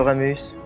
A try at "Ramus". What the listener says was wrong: C'est pas Rameus, c'est Ramus. C'est-à-dire Tu dis Rameus, c'est trop bizarre.